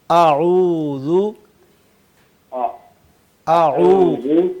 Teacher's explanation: अदा हो जाता है हमजा और हा हलक के आखरी हिस्से से